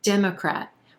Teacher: Number 14, Democrat, Democrat. We've got 3 syllables here, emphasis on that first syllable and the E as in red vowel sound